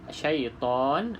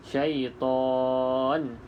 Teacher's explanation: Kita boleh panjang 2 harakat syaitan, ataupun 4 harakat boleh syaitan, ataupun 6 pun boleh syaitan. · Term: mad arid lisukun